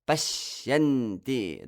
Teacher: That sh, the sh is kind of prolonged to give the heaviness to that syllable.